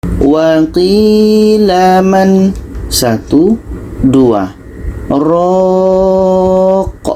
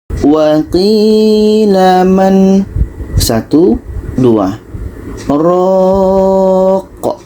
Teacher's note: Jadi tidak berlaku di sini nun mati bertemu ra. Nun mati bertemu ra ini kan idgham bila gunnah. Tidak berlaku di sini idgham. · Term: sakta